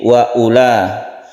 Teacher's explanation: U-nya di sini pendek karena wawunya ini tidak berlaku hukum mat ya. Jadi wa ula.